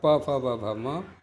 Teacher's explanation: प वर्ग अर्थात प फ ब भ म का ओष्ठ स्थान होता है